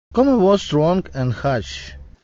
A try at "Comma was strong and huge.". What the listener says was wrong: Comma was strong and huge. So that word huge, he had the vowel wrong. It should be huge, oo. He had and then the final consonant, that G sound, which actually is sounding like a J, huge, j, that G spelling sounds like a J sound.